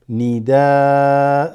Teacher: No N sound, just nida, right?